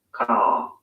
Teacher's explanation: in car, the vowel sound is lengthened in place of the R sound